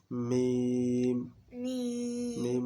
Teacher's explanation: মিম দুই ঠোঁট হইতে, হ্যাঁ মিম উচ্চারিত হয়